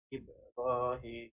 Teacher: Ini menunjukkan qalqalah sughra, itu qalqalah kecil, dan dibaca dengan menjelaskan bunyi bacaan huruf ba mati secara halus